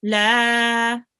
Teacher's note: after the lam, there is an alif, which means the lam will be prolonged for 2 seconds